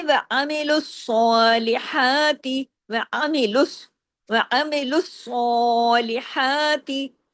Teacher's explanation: سواد کو ہیوی بھی کرنا ہے، تمام باریک حروف ہیں لیکن سواد یہاں پہ ڈبل بھی ہے، یہاں پر ہیوی بھی ہے،